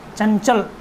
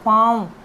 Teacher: अनुस्वार की आवाज़ जो है, उच्चारण जो है वो केवल नाक से होता है, और अनुनासिक का जो उच्चारण है वो मुख, नासिका दोनों से एक ही समय में होता है